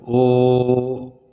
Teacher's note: बोलो अ तो ये ह्रस्व हो गया एक मात्रा अ फिर दो मात्रा आ ये दीर्घ हो गया फिर ओ ये प्लुत हो गया तीन मात्रा · फिर ओ, ये प्लुत हो गया 3 मात्रा